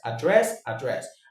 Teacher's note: Address the noun, address the verb. The same stress on the second syllable.